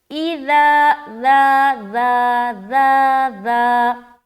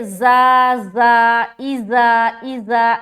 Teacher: بغیر سیٹی کے، سیٹی والی ساؤنڈ نہیں آنی چاہیے، بالکل اس میں ذرا سی بھی سیٹی والی بو بھی نہیں آنی چاہیے، بو جو بولتے ہیں نا بو، مہک، ذرا بھی سنائی نہیں دینا چاہیے، اذا ذا ذا ذا ذا، ایسا۔